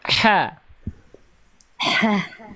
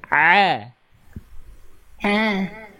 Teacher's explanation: coba ha kecil gimana ha ha Nah H kecil kan begitu Ain itu sama seperti H kecil cuman enggak pakai nafas coba lafalkan H kecil Bunda ha ha sekarang pakai ditahan nafasnya